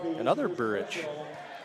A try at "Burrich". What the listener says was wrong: It's Burrich, not Burrish, so. Yeah, but you said another Burrich. There's Burrish and Burrich.